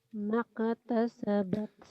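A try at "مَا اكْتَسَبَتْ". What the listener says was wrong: Bukan kol-kola ini. Maktasabat.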